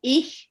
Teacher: Ich they use in Bavaria, in Austria, the hard ch.